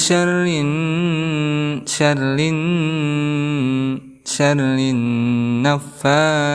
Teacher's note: bertemu dengan nun yang bertasdid, maka kita hukumi sebagai gunnah musyaddadah, maka dengungkan 2 harokat ataupun 1 alif